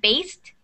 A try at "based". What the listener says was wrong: Yeah, because you said based, so it's based. So you don't emphasize the ed as it's supposed to be a smooth sound. It's based.